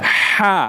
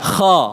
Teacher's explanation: huruf H itu udaranya mengalir persis di atas lidah. H. Sementara huruf kha itu udaranya mengalir ke langit-langit mulut, Mbak, ke atas.